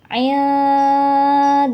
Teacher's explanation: hukum bacaan ikhfa Hakiki karena ada nun sukun bertemu dengan huruf Dal cara bacanya dengung disertai samar Jadi pas ngucapin Ain ee bibir kita siap-siap untuk ngucapin Da